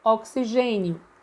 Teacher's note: que em português o gen é a sílaba tônica